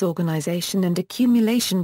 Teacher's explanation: the words organization and accumulation both have primary stress on the fourth syllable but the secondary stress comes on the first syllable in the